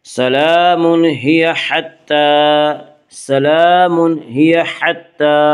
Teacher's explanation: یہاں پہ اظہار حلقی ہوگا، یعنی غنہ نہیں ہوگا